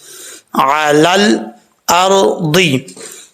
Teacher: اب یہاں پر دیکھیں لام کو جب لام سے ملائیں گے بیچ میں یا اور الف جو ہے اس کو چھوڑ دیں گے۔ لام جو ہے ساکن ہے، اس کو قلقلے سے بچانا ہے